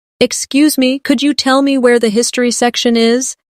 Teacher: In natural speech, could you becomes could ya.